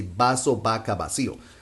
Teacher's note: most of Latin American Spanish speakers, we don't make any differences between ba and va